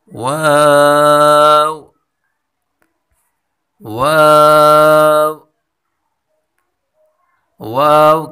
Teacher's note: واو کی مخرج دونوں ہونٹوں کو گول کرنے سے ہے، واو کی مخرج ہے دونوں ہونٹوں کو گول کریں۔